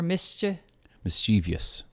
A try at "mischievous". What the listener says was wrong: It's not mischievous. So there is a tendency to want to put that extra E sound in it. So it's not mischievous, it's mischievous.